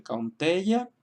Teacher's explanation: estamos también acentuando la segunda sílaba porque contiene una vocal larga, E.